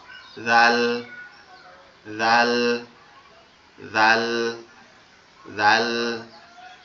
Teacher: আপনার জিহ্বার আগা সামনের দুইটা দাঁত দাঁতের আগার সঙ্গে লাগবে